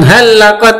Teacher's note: tanwin bertemu dengan lam, bacaan idgham bila gunnah langsung masuk tanpa dengung.